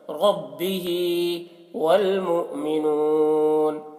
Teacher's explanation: منہ میں جھٹکا لگے گا کیونکہ حمزہ ساکنہ ہے کہ پڑھنے میں جھٹکا ہوتا ہے۔